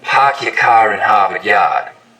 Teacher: In Boston, it's usually pretty fronted. · Stereotypical Boston accents, of course, are non-rhotic, meaning no R sounds in park your car in Harvard Yard. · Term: start vowel